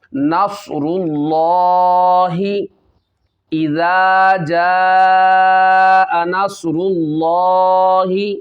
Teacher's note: حروف مدہ کے بعد حمزہ اگر اسی کلمے میں آ جائے مد متصل ہوتی ہے، اس کو بھی کھینچ کر پڑھیں گے۔ 2 2.5 یا 4 الف اس کی مقدار ہوتی ہے، اس کو کھینچ کے پڑھنا ہے۔